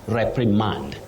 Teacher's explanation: with a stress at the onset, not on the last syllable